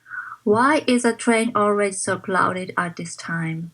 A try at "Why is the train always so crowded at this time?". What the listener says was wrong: don't confuse L and R okay